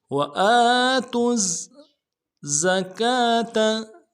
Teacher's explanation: تا کو زا کے ساتھ ملائیں گے، زا کے اوپر تشدید زور دیں گے ، اگلے زا کو نرم سے ادا کریں گے، وَآتُوا الزَّكَاةَ،